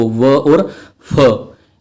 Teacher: जिसमें दांतों का और ओष्ठ का सहारा लेना पड़े उसको बोलते हैं दंतोष्ठ। इसमें आते हैं दो, व और फ।